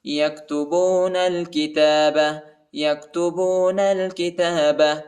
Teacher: نون کو لام کے ساتھ ملائیں گے، الف نہیں پڑھا جاتا، الف کے اوپر حرکت نہیں ہے